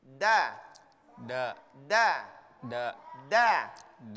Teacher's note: Huruf da itu menyentuh gigi atas, kemudian antara gusi dan gigi atas.